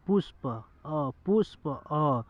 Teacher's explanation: पुष्प बोलने के बाद थोड़ा सा अ आएगा, ऐसा महसूस होगा कि पुष्प अ, यानी समझ हो रहा है कि नहीं? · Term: छोटे